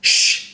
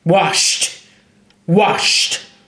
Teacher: shh is a voiceless consonant sound so we give it a t